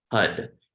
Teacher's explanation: the back we're going to create the sound HUD h-a-r but you flick the tongue onto the roof of the mouth and it ends up sounding like a d